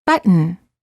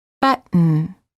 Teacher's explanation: Hold the T as in but, and then add an N without releasing the tongue from the gum ridge. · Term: Held T